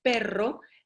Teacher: si decimos perro, la lengua ni siquiera sube, solo vibra